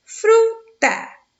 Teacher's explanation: fru é a sílaba de maior intensidade de som